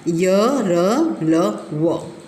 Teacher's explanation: बच्चों, जिन व्यंजनों का उच्चारण करते समय जीभ जो है ना, आपका जिह्वा पूरी तरह से मुख के किसी भाग को नहीं छूती है, तो उसको हम बोलते हैं अंतस्थ व्यंजन।